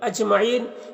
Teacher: وَالنَّاسِ، یہاں پر بھی الف لام حروف شمسی نون کے شروع میں ہے تو الف لام دونوں کو نہیں پڑھیں گے، نون مشدد غنہ ہوگا، اور یہاں پر الف مدہ ہے۔ اجمعین، جیم میں قلقلہ ہوگا، جیم حروف قلقلہ میں سے ہے، اور اس کے اوپر جزم بھی ہے۔ یہاں پر وقف کریں گے تو مد عارض وقفی ہوگا، تو اس طرح سے پڑھیں گے۔